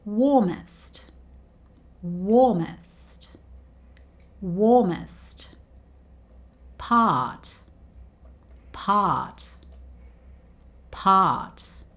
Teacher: Now, warmest and part don't end with the R sound, but notice that we don't say the R sound in these two words either